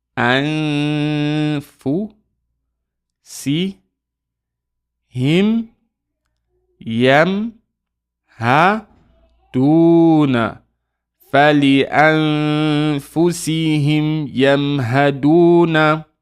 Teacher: Nothing on the noon, so we know we're going to do ikhfa here. We're going to hide the noon.